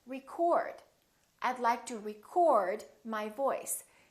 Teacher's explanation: the O is fully pronounced it's prolonged and it's stressed and this part now becomes short it almost disappears and it